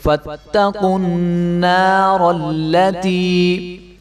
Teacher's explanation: نون کے آگے جو الف ہے اس کو 1 الف کے برابر لمبا کریں گے، اور را کو خوب موٹا کر کے جو ہے ہم لام کے ساتھ ملا دیں گے